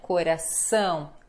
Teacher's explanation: Coração, a sílaba mais forte é o ão.